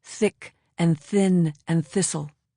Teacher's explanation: It is the soft, voiceless, almost whispered th of thick and thin and thistle.